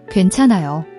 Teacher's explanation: It's a tricky combination of G, W, and AE. Make sure to round your lips for the W sound and then spread them for AE. Not Gwen or gone.